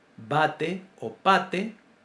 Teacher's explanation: Una es sorda y la otra es sonora. Es la única distinción que tienen. Y ese solo rasgo hace que para nosotros sean dos letras completamente distintas.